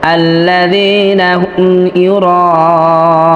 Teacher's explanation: একই শব্দে মাদের হরফের পরে যদি হামজা আসে তাহলে ওইখানে 4 আলিফ টেনে পড়তে হয়, এটাকে মাদ্দে মুত্তাসিল বলা হয়। তো এখানে মাদের হরফ হামজা হয়েছে, অর্থাৎ আলিফ হয়েছে, তারপরেই হামজা আসছে।